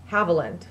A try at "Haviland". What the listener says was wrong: Oh. Not Hav. Mm-hmm. Not like little bird, little Haviland.